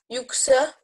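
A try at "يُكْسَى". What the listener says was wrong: Non, là, cet exercice-là, c'est pour prolonger les voyelles. Donc, prononce bien les deux temps de sa.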